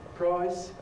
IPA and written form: prɑɪs (price)